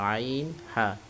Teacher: দুই নম্বর মাখরাজ কণ্ঠনালীর মধ্যখান হইতে উচ্চারিত হয় গলাটা একটু চেপে ধরবেন